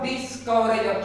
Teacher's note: तो मैंने डिस पर मेरा स्ट्रेस हुआ है, जोर लगा है, वो आराम वो जो होता है कवरेज, वो आराम से बोला जाता है।